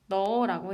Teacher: 넣다라는 말을 넣어라고 했을 때 히읗 받침이 사라지는 현상을 자음 탈락이라고 합니다